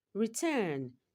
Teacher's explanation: Turn is a second syllable and it takes the stress.